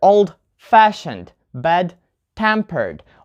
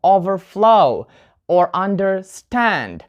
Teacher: for adjectives and verbs, we put the stress on the second part